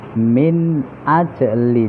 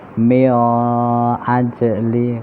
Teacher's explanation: nun sukun bertemu hamzah, izhar atau jelas. Pembacanya min ajli, tidak boleh mio ajli karena huruf izhar, alif ha kha ain ghain ha.